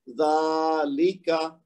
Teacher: जाल के ऊपर खड़ी ज़बर है ना, तो 2 हरकत खींचेंगे